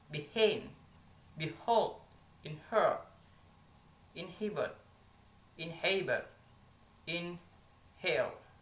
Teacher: a voiceless glottal fricative sound H